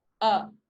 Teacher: your tongue is in a central position so it's not at the front most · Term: wedge